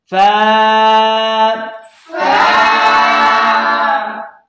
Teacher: اوپر کے دانتوں کے کنارے اور نچلے ہونٹ کا تر حصہ اس سے فا ادا ہوگی